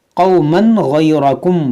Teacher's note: یہاں تنوین کے بعد غین حروف ہلکی ہے تو یہاں پر اظہار کریں گے, یعنی یہاں پر غنہ نہیں ہوگا